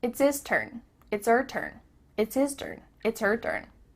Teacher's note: The H at the beginning of his and her is cut off.